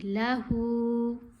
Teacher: لام کی آواز چھوٹی ہوگی, ہو کی آواز لمبی ہوگی.